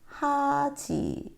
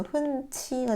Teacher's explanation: 모음이 탈락되자마자 히읗과 지읒이 합쳐지네요. 그렇죠. 합쳐져서 하나로 변합니다. 치읓. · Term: 축약